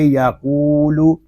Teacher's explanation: لام پیش لو، یقولو، لام کو کھینچ کر نہیں پڑھیں گے